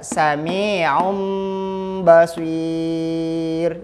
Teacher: jadi bunyi tanwinnya hilang jadi yang ini terdengar adalah bunyi mim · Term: iqlab